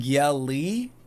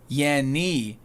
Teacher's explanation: yelly is at the top of your teeth, and the N is at the top of the roof of your mouth